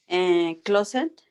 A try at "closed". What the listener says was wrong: Acuérdate lo que acabo de decir. No sería closet, ¿qué sería? La E silenciosa. Closed. Mira cómo la pronunciación. Closed, con la D. La E silenciosa.